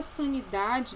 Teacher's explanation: O I da palavra sanidade não é tônico, a palavra é paroxítona, o da é a sílaba mais forte e não é acentuada, então não tem acento gráfico no I.